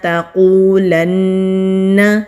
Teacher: تا کے اوپر زبر ہے، کھینچنا نہیں ہے، باریک پڑھنا ہے کیونکہ یہ باریک والا تا ہے۔ قوف مستعلیہ حروف میں سے ہے۔